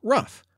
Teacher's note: the guttural sound became f, as in rough, particularly in northern dialects of English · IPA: /f/